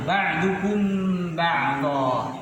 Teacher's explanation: mim sukun diiringi ba, dibaca dengung yang lama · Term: ikhfa syafawi